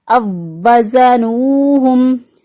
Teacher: زا کی ادائیگی میں سیٹ جیسی آواز آنی چاہیے